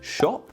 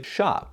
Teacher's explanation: whereas British speakers would say shop American speakers might say sharp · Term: O sound